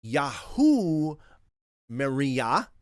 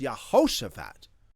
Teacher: So even though the divine name has an ah sound in it, like Yah, when you attach it to the front of a long name like Yahushua, the Yah reduces to a Ye, Y-E. This is an unbreakable law of biblical Hebrew phonetics.